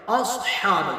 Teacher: صاد کو پر کریں گے، حا کو حلق سے ادا کریں گے